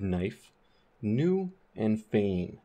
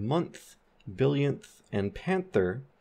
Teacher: that N is fronted more towards the teeth, so it sounds more like an N. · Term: dentalized N